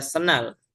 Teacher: Huruf D yang ada pada kata sendal itu di leburkan suaranya dihilangkan begitu ya. dileburkan ke huruf N senal begitu ya. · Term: asimilasi